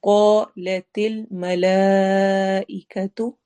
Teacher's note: قا میں قاف اور الف دونوں موٹے ہوں گے